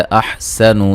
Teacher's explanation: सीन को बारीक सीटी से अदा करेंगे